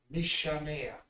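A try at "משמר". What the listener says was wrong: Not a ka. The ka is a different sound. It's a ra.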